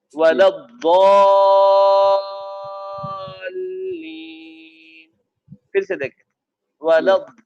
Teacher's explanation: जैसे कि हम मद्द लाजिम करते हैं, मद्द लाजिम करते हैं, किरत के साथ हम पढ़ते हैं तो उसमें 5 अलिफ हम करते हैं